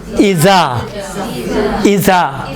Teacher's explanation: ہم جب زال کو ادا کرتے ہیں تو زا جیسا ادا کرتے ہیں۔